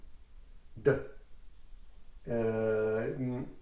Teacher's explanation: quand on prononce D, déjà, c'est une occlusive centrale. C'est-à-dire qu'elle est donc, comme le T, elle est au centre de la bouche.